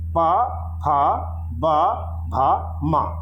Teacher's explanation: प, फ, ब, भ, म, इनका उच्चारण स्थान है ओंठ। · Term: प वर्ग